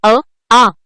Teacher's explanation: अ आणि आ हे स्वर कंठातून उच्चारले जातात, म्हणून ते कंठ्य वर्ण आहेत.